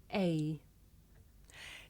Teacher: this is a diphthong a double vowel sound the shape the mouth makes changes from the beginning of the sound to the end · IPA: eɪ, /eɪ/